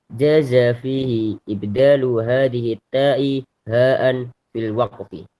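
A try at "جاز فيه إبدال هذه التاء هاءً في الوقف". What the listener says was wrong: Fil waqfi itu ya, bukan fil wafqi. Salah. Fil kebalik. Fil waqfi.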